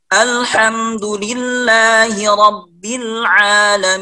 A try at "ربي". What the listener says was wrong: هنا الباء ترقيق ليس تفخيم،